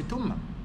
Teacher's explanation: the tha is sa, always they pronounce it as sa. Or they pronounce it as ta. They don't say thumma, they say tumma.